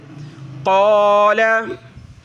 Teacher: قاف کو موٹا کریں گے، بڑی قاف ہے حروف قلقلہ میں سے